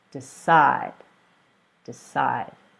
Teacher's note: the verb decide so two syllables decide and the stress according to the rule is on the second syllable